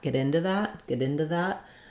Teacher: I may change my ooh to a schwa and I may change my T to a flap as well so this T becomes a flat more like a d and · However, if I'm just saying get into something, get into that, when I'm going from into to a consonant sound, like the TH of that, get into that, I may change my oo to a schwa, and I may change my T to a flap as well. So this T becomes a flap, more like a D, and this one can as well.